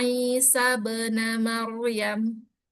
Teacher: kalau dia dalam kondisi wasal, maka hamzah wasal ini tidak dibaca